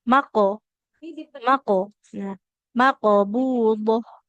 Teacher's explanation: bunyi qalqalah itu dia mendekati hurufnya seperti ke berharakat fathah ya. Huruf qof itu ketika fathah bunyinya.